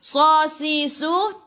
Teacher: Sasisu tebal. Sifat huruf sad kena ada safir.